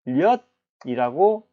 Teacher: 바로 이 리을과 니은의 덧붙음으로 인접한 자음이 이렇게 이어짐으로 해서 니은과 리을이 만났을 때 이때는 무엇이 일어납니까? 바로 유음화가 일어나죠.